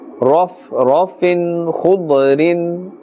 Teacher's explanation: we can see the kha and the dad. Both of them are part of the huruf musta'aliya and must be pronounced with a full mouth.